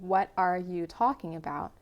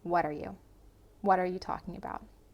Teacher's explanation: taking a phrase like what are you and reducing it to sound like one word instead of three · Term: phrasal reductions